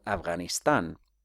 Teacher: And V does not exist in Spanish. V is just sometimes used as the voiced allophone of F